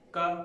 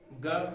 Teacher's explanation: जिनके उच्चारण में सीमित वायु या कम वायु निकले वे अल्प प्राण कहलाएंगे। और हाँ, अल्प प्राण व्यंजन में हा, ये अल्प प्राण व्यंजन हा रहित होते हैं।